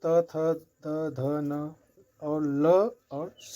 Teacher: दंत से त थ द ध न और ल और स बोला जाता है